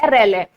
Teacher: प्रकंपित आपका इसलिए हुआ क्योंकि इसको बोलते समय हमारी जीभ में वाइब्रेशन होता है, हमारी जीभ जो है कांपती है · ये पार्श्विक व्यंजन कहलाता है, ये जीभ के पिछले हिस्से से बोला जाता है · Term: प्रकंपित व्यंजन